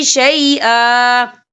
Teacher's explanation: وقف کی صورت میں ایک زبر پڑھا جائے گا، دو زبر نہیں پڑھے جائیں گے